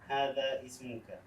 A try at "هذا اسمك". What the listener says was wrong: Try to connect them a little bit faster. So that way we get rid of hamzatul wasl. We get rid of it.